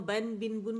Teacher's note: جو نون ہے اس پہ ٹکنا نہیں ہے، بس ون کاؤنٹ کے لیے جانا ہے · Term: نون ساکن